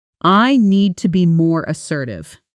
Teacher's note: Hear how need to becomes almost need-to, and the whole sentence has one smooth wave of sound, rising slightly on assertive, because that's the important stressed word. This is called sentence stress, and it's one of the biggest keys to sounding natural.